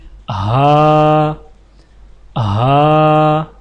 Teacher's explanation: زبان کی جڑ کو حلق کی طرف دبائے بغیر باریک اور بغیر رگڑ کھاتی سانس میں پڑھیں